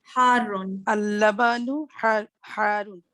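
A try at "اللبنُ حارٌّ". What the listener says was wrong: Very good. That's awesome. Good job.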